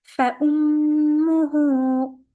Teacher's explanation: Mim has a shadda, so as you know, when you have a shadda on noon or mim, you have to make it stronger 2 counts.